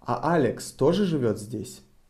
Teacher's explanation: We are interested if Alex is also living here. So we raise our intonation on Alex.